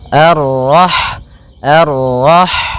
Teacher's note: sifat ha itu yang paling mencolok adalah sifat hamasnya yaitu mengalir n nafas ketika kita membacanya arah arah kemudian dan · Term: sifat hamsnya